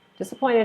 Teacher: disappointed has four syllables disappointed and the stress is on the third one